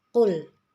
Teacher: qaf adalah huruf isti'la sehingga harus dibaca tebal